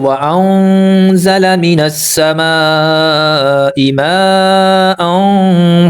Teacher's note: مد متصل 5 حرکات کے برابر لمبا کیا جاتا ہے، تو اس مد کی پہچان یہ ہے کہ اس مد کے بعد فوراً جو حمزہ ہے وہ اپنی اصلی شکل میں ہوتا ہے، جو عین کی طرح حمزہ ہوتا ہے، اس کو 5 حرکات کے برابر ہم کھینچتے ہیں۔